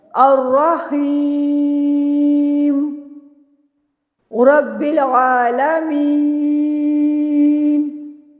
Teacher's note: طول کے ساتھ مد عارض وقفی کیا۔ اگر آپ یہاں پہ آپ کا سانس اتنا لمبا نہیں ہے، آپ توسط کے ساتھ وقف کرنا چاہیں گے تو پھر یہاں پہ آپ 2 الف یعنی 4 حرکات کے برابر وقف کریں گے۔